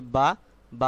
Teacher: এক আলিফ পরিমাণ টেনে পড়তে হবে। স্বরটাকে একটু দীর্ঘ করতে হবে।